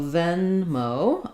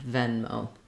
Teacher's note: venmo has the same stress pattern as paypal first syllable stress · syllable stress second syllable is also stress it's not venma but we do have a clear o diphthong here on venmo